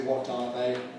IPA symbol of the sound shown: ɑː